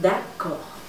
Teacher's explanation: Fíjate que la D al final es muda, no se pronuncia.